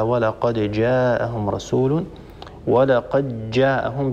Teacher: بإدغام دال قد في الجيم، يقرأ أبو عمرو، ينتبه لهذا من يقرأ للدوري.